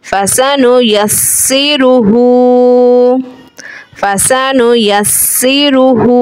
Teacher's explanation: यहाँ पे हरकत है, तशदीद है यानी सीन हर्फ मुशद्दद है, हा पे खड़ी हरकत है, हा को एक अलिफ की मिकदार खींच के पढ़ेंगे। सीन हुरूफ़े सफ़ीरिया है, सीन में सीटी जैसी आवाज़ आती है अदायगी में सीन की।